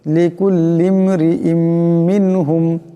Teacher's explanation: এখানে দুই জের তনমিনের পরে মিম আসছে ইদগাম হয়ে যাবে এখানে ইদগামের আকারে পরিমাণ গুণ্য হবে লিকুল্লিম মিনহুম মিম নুন জের